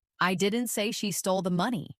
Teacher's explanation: Now, let's emphasize the word she. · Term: emphasis